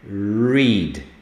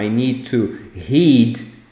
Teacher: O R em inglês, esse R americano, ele é falado, tem uma vibração na ponta da língua.